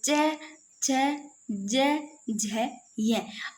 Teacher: आपको ऐसे नहीं लग रहा जैसे आप थोड़ा सा जैसे इस प्रकार जब बोलते हो सांस है ना ऐसे स्पर्श कर रही है। मतलब स्पर्श करने के साथ में से घर्षण सा हो रहा है। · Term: स्पर्श संघर्षी